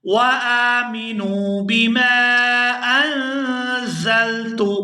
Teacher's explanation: یہاں نون ساکن پر اخفا کریں گے، آواز ناک کے اندر جائے گی اور کچھ دیر اس کو ناک کے اندر روک کر رکھیں گے